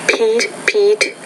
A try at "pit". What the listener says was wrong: Lesson number 11, you're saying meet, meet, Pete, Pete. I'm saying meet, mit, Pete, pit. So you're having trouble with the longer vowel sound there. No, the shorter one, the it.